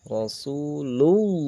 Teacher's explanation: lafaz Allah sebelumnya ada huruf yang berharokat dhammah, maka harus dibaca tebal atau tafhim. Ra di sini ra tebal, ra harokat fathah. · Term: lam lafzul jalalah